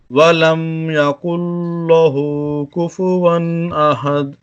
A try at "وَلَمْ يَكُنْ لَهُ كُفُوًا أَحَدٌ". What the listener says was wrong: دیکھیں لام کو کیوں موٹا پڑھ دیا آپ نے، اور احد میں کلکلا کیوں چھوڑ دیا آپ نے؟ احد. وَلَمْ يَكُنْ لَهُ كُفُوًا أَحَدٌ.